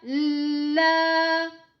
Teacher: allonge le lam, le deuxième lam qui a l'alif saghira deux temps